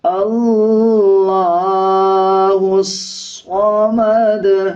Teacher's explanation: ہا کو صاد کے ساتھ ملا کے پڑھا جائے گا اور صاد موٹے حروف میں سے آتا ہے، اس کو پر یعنی موٹا پڑھا جائے گا